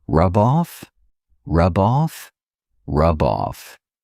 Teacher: They go together. I can take that B sound and connect it to the next word, but I have to combine them together. I have to see them as one word.